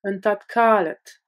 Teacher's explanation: Le D de tat se durcit et se prononce T car il est suivi de la consonne sourde K.